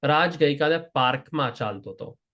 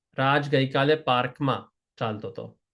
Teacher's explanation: Park machal the park machal gets the emphasis. There's an emphasis on park.